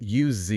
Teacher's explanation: When used as a verb like I will use the tool, we make a voiced buzzing sound at the end. The Z sound.